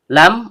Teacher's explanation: Lam ujung lidah bertemu dengan langit-langit bagian depan